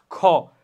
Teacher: যেমন দেখো খ, বেশি বাতাস বের হচ্ছে এবং নিচের চোয়ালের মাংসপেশি থেকে একটু চাপ পড়তেছে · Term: মহাপ্রাণ